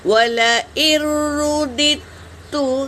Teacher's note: دال کو تا میں ملائیں گے، یہاں پر بھی دال پہ سکون ہے، اس کو نہیں پڑھیں گے بلکہ تا پر تشدید ہے، تشدید بڑا ہوتا ہے تو رودت تو اس طرح پڑھیں گے۔